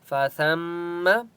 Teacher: سا کو میم کے ساتھ ملائیں گے اور یہاں پر غنہ ہوگا